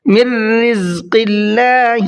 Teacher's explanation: اللہ کے لام کو باریک کر کے پڑھنا ہے اس لیے کہ اللہ کے لام سے پہلے زیر ہے